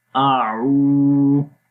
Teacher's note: آ کی آواز سمپل رہے گی، آ لمبا نہیں کریں گے